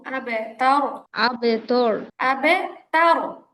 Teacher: তা জবর তা আর রটা মোটা হবে